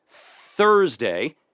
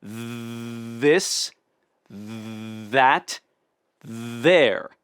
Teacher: two different th sounds the unvoiced th in words like think thank and Thursday and the voiced th in this that there